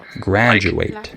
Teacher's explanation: DU can be with a j sound, like graduate